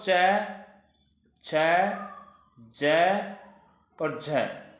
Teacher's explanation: ये स्पर्श व्यंजन भी है और ये संघर्षी व्यंजन भी है, इसलिए इसको कहा जाता है स्पर्श संघर्षी व्यंजन